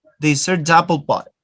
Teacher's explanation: You join the da with the a sound.